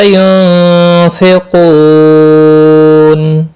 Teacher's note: نون ساکن کے بعد حروف اخفا کا فا اخفا حقیقی ہوگا۔ قو و مدہ ہے، ایک الف کے برابر کھینچ کر پڑھیں گے۔ قاف مستعلیہ ہے، پر پڑھا جائے گا۔ وقف کی صورت میں نون ساکن پڑھا جائے گا، وقف بالاسکان ہوگا۔